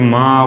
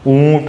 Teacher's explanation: माँ में क्या होता है, नाक से भी इसका वाइब्रेट होता है, ठीक है, नाक से भी हवा निकलती है, मुंह से भी निकलती है, ठीक है, जैसे आ, ठीक है, ई, ठीक है। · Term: अनुनासिक स्वर